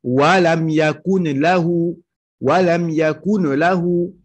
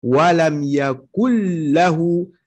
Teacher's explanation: Donc tu vas dire walam yakul lahu. Le noun, tu le rentres dans le lam. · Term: idgham